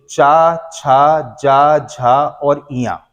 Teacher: इनका उच्चारण बेटा तालू के स्पर्श से होता है इसलिए तालव्य व्यंजन कहलाते हैं